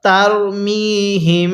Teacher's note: মিমটাকে আমরা নাকের বাঁশি দ্বারা গুনাহ করব